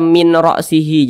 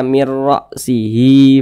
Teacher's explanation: Kalau idgham bil gunnah didengungkan, kalau idgham bila gunnah tidak didengungkan. Nah, jadi huruf non ini masuk ke huruf ra. Dia melebur. Nah, jadinya dibaca mir.